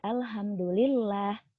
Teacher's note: huruf lam yang dibaca tarqiq itu dengan tipis